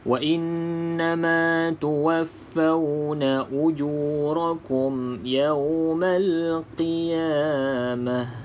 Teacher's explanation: nun ada tanda sabdu, maka kita baca dengung 2 harakat, wajibul gunnah.